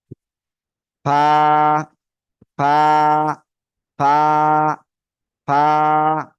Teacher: করব উচ্চারণ করবো করবো এই যে এরকম ফা ফা ফা ফা এই যে হালকা বাতাস বের হবে এই যে এরকম ফা ফা সবাই জোরে জোরে বলেন তো ফা